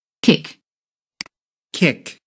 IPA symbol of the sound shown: kɪk